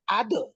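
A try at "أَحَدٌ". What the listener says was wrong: আদো না, এই যে আদো বললেন এটা কিন্তু উপরের দিকে চলে গেছে। যখন বলবেন আদে তখন এটা নিচের দিকে যাবে। আদে বলতে হবে। হ্যাঁ, যেমন কুল হুয়াল্লাহু আহাদে, আহাদে, এখানে আহাদে নিচের দিকে গেল না উপরের দিকে গেল?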